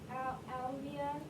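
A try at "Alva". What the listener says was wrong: Not Alvia, you're adding letters. Make sure you're pointing at the word and only reading the letters that are there. You added an I, there's no I. So say that word without that E sound. Why are you adding an E sound?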